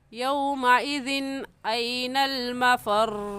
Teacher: क्योंकि जिस अलिफ के ऊपर ज़बर आ जाए या ज़ेर या पेश या कोई भी हरकत हो तो फिर उसे अलिफ नहीं कहते बल्कि हमज़ा कहते हैं। तो यहाँ पर तनवीन के बाद हुरूफ़ हल्की में से हमज़ा आ गया है तो इस वजह से इस तनवीन पर गुन्ना नहीं करेंगे बल्कि जल्दी से पढ़ जाएंगे